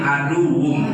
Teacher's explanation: Nah, tanwin bertemu dengan mim. Masukkan dulu tanwin, suara tanwin ke dalam huruf mim. Idghamkan dulu, ya.